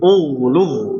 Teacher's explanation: Jangan sampai lidahnya bermain atau jangan sampai lidahnya menempelkan ke langit-langit terjadinya huruf dal. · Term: ghain